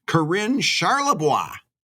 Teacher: putting the accent on the second syllable